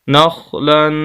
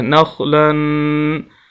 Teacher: یہاں پر دیکھیں نون کو خا کے ساتھ ملائیں گے، آخر میں تنوین ہے، دو زبر ہے، ہم اس کو غنہ کریں گے